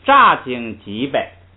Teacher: 这个经呢是一个和，是个虚词，所以呢读这个轻声